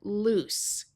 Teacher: Here is the word loose with two O's and the unvoiced S sound.